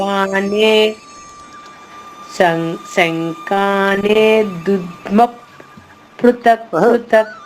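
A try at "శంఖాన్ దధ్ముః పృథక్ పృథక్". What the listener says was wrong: లేదు లేదు, అక్కడ నే లేదు కదా. శంఖాన్ దద్ముక్.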